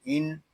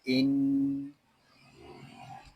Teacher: یہاں نون مشدد ہے، اس کو غننے کے ساتھ پڑھیں گے، اس کو ان اس طرح نہیں پڑھیں گے، اس کو پڑھیں گے ان۔